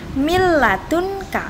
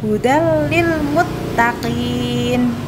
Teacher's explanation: nun mati bertemu dengan lam juga Jadi enggak boleh dengung